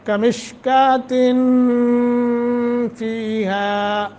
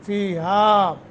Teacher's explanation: نون تنوین کے بعد فا حروف اخفا میں سے آ گیا ہے، لہذا یہاں اخفا کریں گے